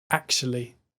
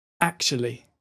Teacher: the final two syllables are really close together